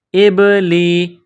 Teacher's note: لام کے نیچے زیر ہے تو لام کو باریک کریں گے